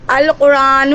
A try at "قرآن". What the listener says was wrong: ارے القرآن کہاں سے ہے؟ یہاں الف لام تو ہے ہی نہیں، اس کو پڑھیے قرآن.